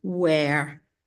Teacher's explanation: most people just pretend the H is silent and pronounce the W